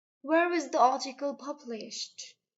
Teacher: the intonation rises in the first, falls in the end. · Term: WH question